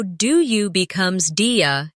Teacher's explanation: Notice how do you becomes dia in casual conversation.